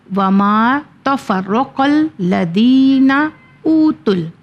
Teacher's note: اوتل میں نے الف کو نہیں پڑھا، نہ الف واو کو پڑھا، نہ الف کو پڑھا، ڈائریکٹ لام میں جوائن کیا ہے